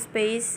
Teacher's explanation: space atau space yang tidak beraspirasi